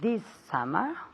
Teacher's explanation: She linked the S sound with the S sound